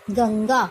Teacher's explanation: यहाँ पर दूसरा अक्षर है ग और ग का पंचम अक्षर है अंग, इसलिए इसका उच्चारण है ग अंग गा, आधा अंग और ग और आ, गंगा। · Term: नासिक्य ध्वनि